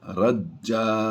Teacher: 2 زبر کی تنوین ہو اور آگے وقف آ جائے تو اسے الف مدہ سے بدل دیتے ہیں، یعنی ایک زبر پڑھی جائے گی اور یہاں پر یہ الف بھی پڑھا جائے گا۔